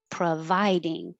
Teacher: the pro is not stressed and it changes to uh